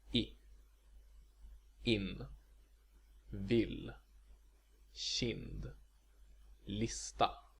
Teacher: It's pronounced I, which is somewhere in between the vowels in English beat and bit, but of course always short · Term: Short I